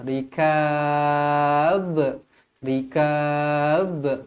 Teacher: Kalau berhenti dekat sini dia akan jadi Qalqalah kubra Qalqalah kubra melantun